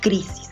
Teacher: Crisis es una palabra grave porque tiene la mayor fuerza de voz en la penúltima sílaba.